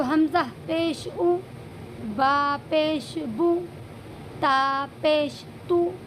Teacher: جو ہونٹ ہیں ان دونوں کو آپس میں ملاتے ہیں جس وقت پیش کو ادا کرتے ہیں